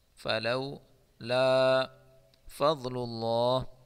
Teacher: ضاد کو پر پڑھیں گے اور اللہ کے نام کو موٹا پڑھیں گے